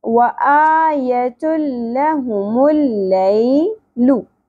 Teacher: یا ساکن سے پہلے زبر حرف لین نرمی سے ادا ہوگا